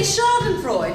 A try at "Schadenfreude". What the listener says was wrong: There, you see, you just did it. You left off the last syllable. No, it isn't.